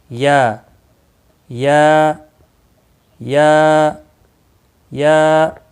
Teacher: 1 الف کے برابر، یہ مقدار کے برابر کھینچ کر پڑھنا ہے